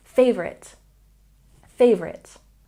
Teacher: when we pronounce favorite, we stress the first syllable